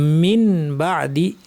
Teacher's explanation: এখানে নুনের উপর একটা ছোট্ট মিম দিয়ে বোঝানো হয়েছে যে নুনকে পরিবর্তন করে মিম বানিয়ে পড়তে হবে। এই নিয়মের নামই হচ্ছে ইকলাব।